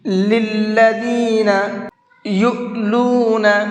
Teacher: للذین یؤلون، یہاں پر حمزہ ساکن ہے، اور حمزہ ساکن کو جھٹکے کے ساتھ میں پڑھا جاتا ہے، اس لیے اس کو جھٹکے کے ساتھ میں پڑھیں گے۔